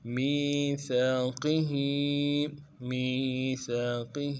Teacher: قوف کو موٹا کریں گے اور زیر کو نرمی سے پڑھیں گے